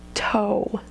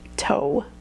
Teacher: There's a w at the end that you can hear pretty clearly.